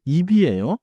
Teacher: 입 has final 비읍, so 입이에요. And in natural pronunciation, 입이에요 links smoothly.